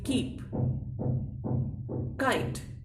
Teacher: हिंदी का का और इंग्लिश का का थोड़ा सा, बस थोड़ा सा अंतर है। जो इंग्लिश का का है इसमें हल्का सा ख का उच्चारण दिखता है